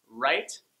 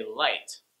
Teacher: your tip of your tongue touches just behind your upper front teeth for the L and then your tongue is back for the R. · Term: L sound